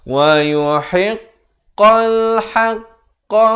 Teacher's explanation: Qaf makhrajnya di pangkal lidah